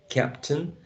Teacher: the last part is a schwa